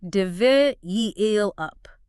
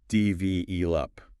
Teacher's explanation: You'll often hear people say develop with the emphasis on the last part, but the correct way is develop with the stress on the second syllable.